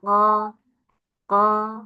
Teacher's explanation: Masuk ke bagian lidah. Dari pangkal lidah paling dalam.